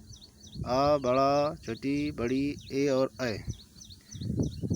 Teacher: जिन स्वरों के उच्चारण में ओठ गोलाकार या वृत्त मुखी नहीं होते उन्हें आवृत्त मुखी स्वर कहते हैं